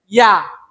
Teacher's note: ইয়া এমন একটা অক্ষর যে অক্ষরটা জিহ্বাটা কোনো জায়গাতে লাগতো না, জিহ্বাটা মুখের একবারে মিডিল সেন্টারে থাকবো